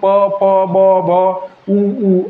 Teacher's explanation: ओठांचा एकमेकांना स्पर्श होऊन जर उच्चार होत असेल त्यांचं नाव ओष्ठे